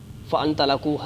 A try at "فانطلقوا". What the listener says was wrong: فان نہیں فن تلقو وہ چلے